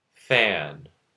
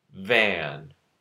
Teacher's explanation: F and V are both labiodental fricative consonants. F is unvoiced, V is voiced.